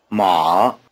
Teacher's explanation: Try repeating surname. Be sure to copy the low tone.